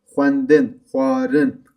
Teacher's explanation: X ve v sesi diftong yapıyor.